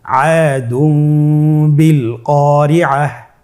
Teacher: তাহলে আমরা যেটি করব যে তানবিনকে মিম দ্বারা পরিবর্তন করে গুন্নার সহিত পড়ব